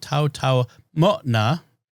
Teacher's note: The apostrophe is a glottal stop there